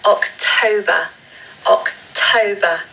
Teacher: because it ends with ER, we need a schwa sound at the end · So again, like with September, we need to stress the second syllable.